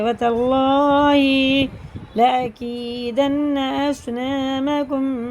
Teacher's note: اللہ کا لام زبر کے ساتھ ہے تو پور پڑھیں گے